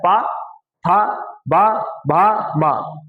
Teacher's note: अगर पा बोलना है तो ओठ एक बार चपकाने पड़ेंगे। और जब हवा आ जाए तब खोलने पड़ेंगे। जब वायु आ जाए अंदर से तब आप खोलेंगे तो पा बनेगा।